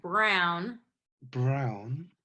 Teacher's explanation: Okay, so that's a very, very good R. Very clear, very pulled back.